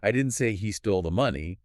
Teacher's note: Stressing stole implies he got the money some other way, maybe borrowed it.